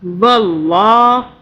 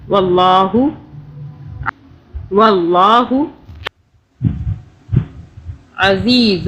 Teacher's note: واللہ اللہ کو موٹا پڑا، پیچھے زبر آ رہا ہے